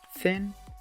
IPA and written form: θɪn (thin)